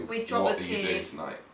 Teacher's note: But we wouldn't pronounce the T in what are you doing tonight?